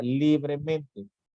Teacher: si pronunciamos la palabra libremente, nos damos cuenta que en li es donde recae precisamente el acento prosódico